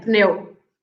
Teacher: You pronounce the P and the N.